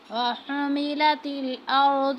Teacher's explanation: اب ہا کو باریک پڑھے۔